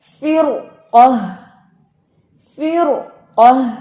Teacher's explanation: اب دیکھیں فی, فا زیر فی, را ساکن یعنی را ساکن ما قبل کسرہ, بٹ ما بعد کیا آ گیا قاف ہیوی لیٹر, اس وجہ سے یہاں پہ ہم پڑھیں گے فر قہ, فر قہ.